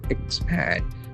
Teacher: There are two syllables and the accent falls on the second syllable.